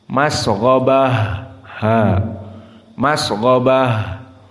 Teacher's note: Namun dikarenakan tak marbutah disukunkan di sini, maka di sini dia dibaca dengan ha. · Maka di sini ada sin dan ha, sama-sama keduanya dalam keadaan hams. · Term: ha at-ta'nis